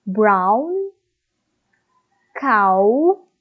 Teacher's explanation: so from the ah it becomes I so our mouth closes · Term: diphthong